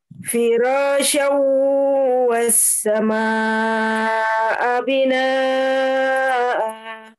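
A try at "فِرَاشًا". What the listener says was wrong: Ya gitu ya, jangan syau-nya itu jangan dikagetkan ya. Jangan kayaknya dia mengalir terus firasyau walaupun dia hukumnya bukan masih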